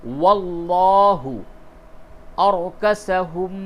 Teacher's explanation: یہ لام جو لفظ اللہ کا لام ہے اس کو پر کیجئے، کیونکہ اس سے قبل زبر ہے، اس کو منہ بھر کے اس کے تلفظ کی ادائیگی ہوگی